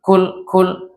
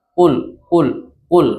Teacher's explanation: Enggak ada angin yang keluar ketika diucapkan. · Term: jahar